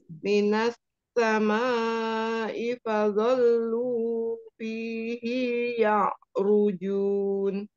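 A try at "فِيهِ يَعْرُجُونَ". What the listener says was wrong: Hi-nya jangan diayun. Fihi ya'rujun.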